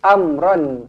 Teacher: Am mim mati izhar syafawi, dimatikan dengan jelas dan terang. Ron izhar halki.